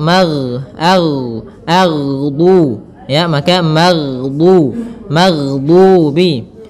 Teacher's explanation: Kesalahan yang sering terjadi adalah memantulkan huruf ghain, yang mana pada dasarnya huruf ghain tidak boleh mantul, tetapi dia memiliki sifat yaitu mengalir suaranya